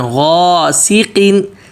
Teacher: غین موٹا اور واضح پڑھنا